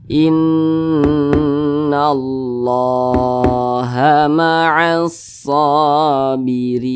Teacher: Ra dibaca tipis, dibaca tarkik karena dia berharokat kasroh. Kemudian ra juga dibaca panjang.